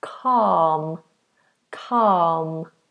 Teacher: the L is silent no touching the roof of the mouth